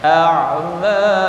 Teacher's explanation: Ashtatal liyuraw a'malahum, a'ma, jangan hilang, jangan jadi jadi a'ma, ain di tengah tenggorokan